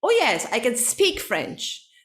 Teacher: the stress is on speak and can it's very quick i mean i don't pronounce it i don't stress the verb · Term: sentence stress